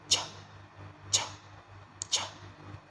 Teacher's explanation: your tongue goes up, your teeth are close together, your lips are round, and a silent burst of air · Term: ch sound